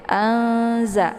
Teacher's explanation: Ikhfa al-shad itu yaitu pertengahan, ya, ataupun setara, ya, antara idhar dengan idghamnya itu, ya, antara bacaan jelas dan dengungnya itu seimbang, ya. Anza, jadi tidak begitu jelas nunnya, juga tidak begitu didengungkan, ya. Jadi nunnya itu tinggal disamarkan aja, siap-siap masuk ke huruf zai.